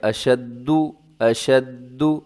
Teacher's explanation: اشد کو آپ نے مضبوطی کے ساتھ پڑھنا ہے کیونکہ یہاں دال کے اوپر تشدید ہے